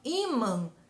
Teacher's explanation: E por isso, ó, imã é acentuado no I. A sílaba tônica de imã é o I e não man